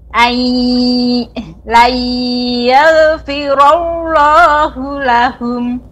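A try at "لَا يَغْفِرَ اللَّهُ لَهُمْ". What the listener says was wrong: Tebalkan lagi sedikit ibu. Layaw. Nah, adapun dibaca layal, ini kurang tebal. Memang sudah mengalir. Layal. Nah, ini kurang tebal. Layaghfirullahu lahum.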